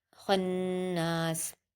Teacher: खा को नून से मिला देंगे, नून पर तशदीद है तो हम गुन्ना करेंगे। खन, नून पर अलिफ मद्दा है, दो हरकत खींचेंगे, सीन पर वक्फ कर देंगे।